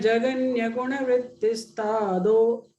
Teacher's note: Because the following letter is a akara, so the visarga becomes lopa. It is removed.